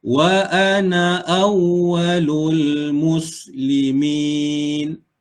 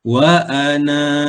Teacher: Kalau tanda lonjong macam ni, semasa kita wasal, na tu dibaca pendek. Kalau kita waqaf pada na, maka kena baca dua harakat.